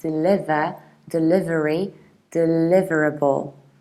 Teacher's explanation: You stress the second syllable like deliver, delivery, deliverable.